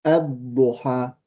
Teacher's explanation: the lam is still dropped, but we pronounce the alif